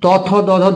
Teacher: জীবের আগাটা আমাদের দাঁতকে স্পর্শ করে তার জন্য এটা দন্ত ব্যঞ্জন